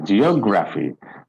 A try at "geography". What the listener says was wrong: So you don't have to be that fast.